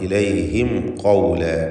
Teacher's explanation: സാക്കിന തമീമിനെ ഇൽഹാർ ഷഫവി നൽകി മണിക്കാതെ വെളിവാക്കണം.